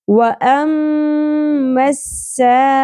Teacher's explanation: clear ہونی چاہیے sound حمزہ کی، مکس نہیں کرنا مد کے ساتھ